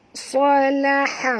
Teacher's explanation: huruf sa ni tebal, ha ni huruf ha pedas. Jadi jangan tebalkan dia kat sini ya.